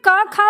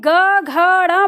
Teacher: जब आपने क खा बोला होगा तो कंपन आपको गले के अंदर लगा होगा, लेकिन जैसे ही आपने ग घ ड़ बोला होगा कंपन आपकी उंगली पर आ गया होगा